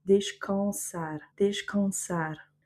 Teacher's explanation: On va avoir par exemple aussi, pour l'exemple du AN, descansar, donc on va prononcer quand et pas can, c'est pas descansar. On referme pas la langue devant pour faire le N.